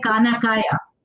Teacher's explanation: So I've replaced my kh with k.